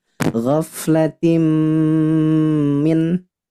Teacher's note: Tanwin kasroh bertemu dengan huruf mim yang bertasydid. Namanya idgham bi gunnah.